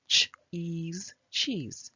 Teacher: the E makes a long sound which is actually the name of the letter